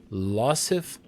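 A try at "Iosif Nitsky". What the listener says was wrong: It's actually an I. It's a capital I. It looks like an L. Isif. I think it is Isif.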